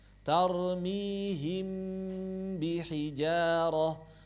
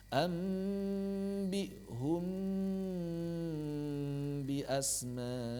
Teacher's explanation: ciri khas ikhfa gunahnya gunah kamilah harus dialirkan dua harakat